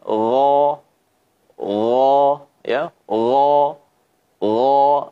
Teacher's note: Maka huruf ghain yang terangkat adalah pangkal lidah saat kita mengucapkannya, sehingga suaranya pun harus ditafkhimkan. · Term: al-isti'la